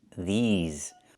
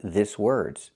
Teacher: We have to use the long E like green beans. I cannot use the short I like this is.